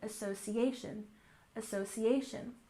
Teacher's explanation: association, we have stress here almost on the end of the word